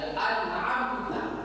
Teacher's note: Nun sukun bertemu dengan ain. An'amta, maka dibaca an, jelas dia. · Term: izhar